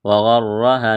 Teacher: را کے اوپر زبر ہے تو را کو موٹا کرنا ہے